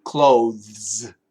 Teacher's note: the th is actually a vibrated th